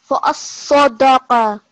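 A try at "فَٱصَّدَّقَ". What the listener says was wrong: No, not sadaqa. Fa'as-sadaqa. So you need to give emphasis on both the sword and the dal. So fa'as-sadaqa.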